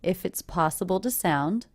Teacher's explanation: Here's another case where one word ends in a consonant sound, the next word begins with a vowel sound. If it's, and I do definitely hear those connecting together.